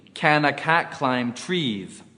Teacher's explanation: the N in can gets transferred or blended onto the A. Also, the S in trees automatically becomes a Z. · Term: linking